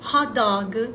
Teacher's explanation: na língua inglesa hot dog não tem a vogal de apoio